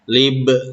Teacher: Lib ini ba sukun disebutnya qalqalah sugro ya, karena ada huruf ba di tengah-tengah kata yang sukun, disebutnya qalqalah sugro. Lib, nah makanya ada pantulan.